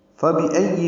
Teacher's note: معروف طریقے سے پڑھنا ہے، حمزہ کو یا سے ملانا ہے، حمزہ اقصی حلق سے ادا ہوگا ، حمزہ کو یا سے ملانا ہے، یا پر تشدید ہے،